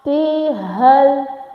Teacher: تحتها الأنهار. Tah, this ha from the throat, okay, say it from the throat, the middle of the throat, like tahtihal, and this ha from the chest, okay.